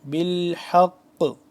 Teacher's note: حق آخر میں جو آواز پلٹا رہے ہیں یہ ہوتا ہے قلقلہ